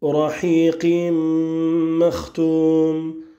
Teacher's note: al-Idram avec la nasalisation pour ta parole, Rahiqim makhtoum, avec l'assimilation du tanwin dans le mime qui vient juste après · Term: al-Idram ou birunna